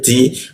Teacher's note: ujung lidah tempelkan ke gigi dia, ti ada bocor halus, lalu masuk ke ha di tenggorokan bagian bawah, ha.